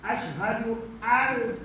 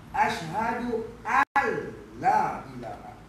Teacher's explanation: Dia beri idgham. Sempurna idgham. Masuk terus. Seolah-olah tu tak ada. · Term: idgham kamil